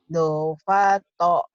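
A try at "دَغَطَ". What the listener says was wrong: Bukan fa, ini go. Dogoto.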